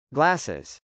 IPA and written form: glˈæsəz (glasses)